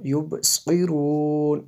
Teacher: فِي ظُلُمَاتٍ لَا يُبْصِرُونَ، فِي ظُلُمَاتٍ لَا يُبْصِرُونَ، اس کو آپ دیکھ سکتے ہیں، وقف کریں گے تو یبصرون، اس قاد کو پر پڑھنا ہے ہمیشہ اور ہر حالت میں